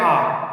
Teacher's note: इसी प्रकार से दूसरा है विव्रत स्वर, यानी विव्रत स्वर की संख्या केवल 1 मानी गई है, जो है आ। यानी विव्रत स्वर क्या होता है, जिसके उच्चारण में हमारी जीभ बहुत ही नीचे हो जाती है